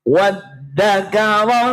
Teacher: Walaupun di depan wawu ada alifnya dibaca pendek